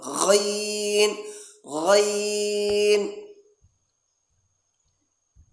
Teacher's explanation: جہاں سے ہم غرغرہ کرتے ہیں پانی ڈال کر، وہاں سے اس جگہ سے آ کر اس کی آواز آنا